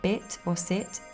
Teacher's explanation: in words like bit or sit, the I sound might become slightly shorter and more centralized. This reduction is influenced by the surrounding sounds and the unstressed nature of the final word position.